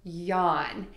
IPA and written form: jɒn (YAWN)